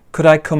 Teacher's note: we stress the verb that comes afterwards